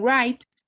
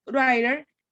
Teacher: la posición de la lengua ya no está de la misma forma, sino que se está apoyando en los alvéolos y está vibrando. ya no está haciendo una cerrazón, no hay un cierre, sino que lo que hay es una vibración. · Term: sonido vibrante